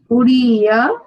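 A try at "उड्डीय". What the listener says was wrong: Uddiya. There is a double da there.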